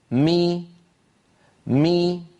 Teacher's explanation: فبتباعد الشفتين خرجت الميم، وبانخفاض الفك السفلي قليلا وارتفاع وسط اللسان قليلا خرجت كسرة الميم